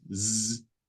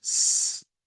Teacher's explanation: One of them is voiced, z, and the other one is unvoiced, s.